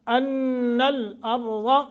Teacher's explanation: غنہ کر کے را موٹا ضاد موٹا